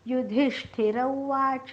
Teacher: उवाच मधला उ ऱ्हस्व आहे, त्यामुळे पटकन म्हणायचं आहे